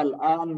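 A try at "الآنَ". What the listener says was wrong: Nah, al-an itu bacanya al-ana, jangan diwakafkan. Al-ana.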